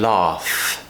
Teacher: the F sound at the end of laugh is of course unvoiced. We're not making a sound from our throat.